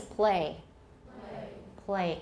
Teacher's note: a lot of Americans have dark L's even before vowels